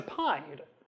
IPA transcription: pajd